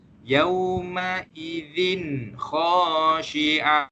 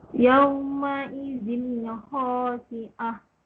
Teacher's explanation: Huruf kha adalah salah satu daripada huruf izhar halqi. Jadi kita kena baca tanwin tersebut dengan jelas.